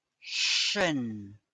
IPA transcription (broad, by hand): ʃən